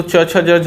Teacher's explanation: च छ ज झ यहाँ आपका तालव्य से उच्चारण होता है